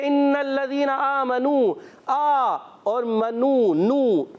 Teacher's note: آ پر کھڑا زبر ہے اور نو میں واو مدہ ہو رہا ہے، کیا ہوگا اس میں فرق کیا ہے؟ دونوں کو ایک ایک الف کھینچیں گے